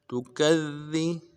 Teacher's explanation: کاف کو ذال کے ساتھ ملانا ہے، ذا کے اوپر تشدید ہے زور دیں گے، اور اگلے ذال کو نرم سے باریک ادا کریں گے